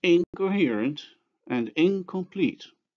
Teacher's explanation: velar before velar consonants as in the words incoherent and incomplete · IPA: (ŋ)k